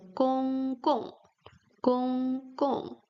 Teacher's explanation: Here we have a word which is composed by two characters which both have gong sound but with different tones. The first character has first tone, gong. The second character has a fourth tone, gong.